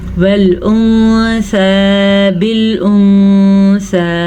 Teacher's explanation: نون ساکن کے بعد سا حروف اخفا میں سے ہے تو نون ساکن کو ہم چھپا کے پڑھیں گے